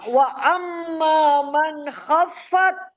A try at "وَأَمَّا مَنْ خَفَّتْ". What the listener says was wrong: خفت خو کو موٹا پڑے